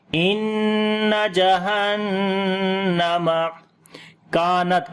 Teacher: ان جہنم کانت، کاف کو باریک پڑھیں گے، لمبا بھی کریں گے، الف مدہ ہے، تا کے اوپر صفت شدت اور ہمس کریں گے